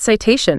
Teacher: Cited, fast T, versus satiation, clear T before the stressed vowel